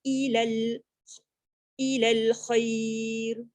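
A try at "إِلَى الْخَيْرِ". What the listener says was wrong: Ilal khair. Dia jangan ilal khair. Dia jadi macam tak lembut nanti. Dia lin tu. Ilal khair. Kha tebalkan dulu.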